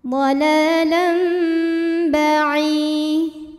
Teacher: Kemudian ada hukum iqlab karena ada tanwin fathah menghadapi huruf ba. Maka bunyi tanwinnya diganti bunyi mim sukun. Jadi dhalalam dan didengungkan.